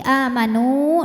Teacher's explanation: nu-nya tetap dibaca jelas panjang dua harokat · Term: mad tamkin